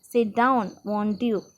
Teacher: They are not questions but just another way of saying please. They have a rising tone.